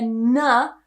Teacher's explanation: it's a nasal sound it should be coming out of your nose so with your tongue you need to be creating a kind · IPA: /n/